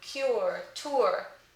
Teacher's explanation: First is the sound as in should, good, book, and then we have the schwa plus rhoticity.